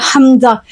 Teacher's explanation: हमजा हलक के सीने वाले हिस्से से अदा होगा